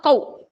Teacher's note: واو پر جزم ہے، واو ساکن، واو ساکن سے پہلے زبر واو لین، اس کو ہم نرم آواز کے ساتھ جلدی ادا کریں گے · دونوں ہونٹوں کو گول کرنے اور نہ ملانے سے واو ادا ہوتا ہے